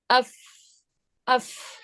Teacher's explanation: اب یہاں پہ دیکھیں آپ غور سے اگر اس چیز کو، کہ آپ کے جو دانت ہیں اوپر کے وہ نیچے والے ہونٹ کے اندرونی حصے پہ لگ رہے ہیں